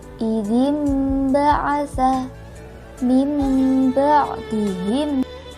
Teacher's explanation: suara nun mati atau tanwin diganti dengan suara mim. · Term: iklab